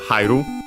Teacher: Accented, actually accented on the ha, on the first mora.